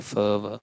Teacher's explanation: यानी अपर teeth with the lower lip, तो लेबियोडेंटल sound होते हैं